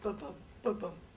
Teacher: the first syllable of each pair is unstressed and the second syllable is stressed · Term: iambic pentameter